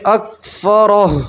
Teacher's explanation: را کے اوپر زبر ہے, را کو آپ پور پڑھیں گے, ٹھیک ہے. یہاں آپ 3 الف کے برابر مت کریں گے. · آخر میں صرف ہا کی آواز مینشن کریں گے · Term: جزم